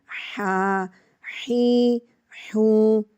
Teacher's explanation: Remember, the ha has a cool sound from the throat. It comes from the middle part of the throat and it makes a cool sound.